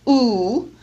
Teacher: Notice how high in the back of the mouth the tongue is raised. So the tongue is almost touching the palate at the back of the oral cavity. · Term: back vowel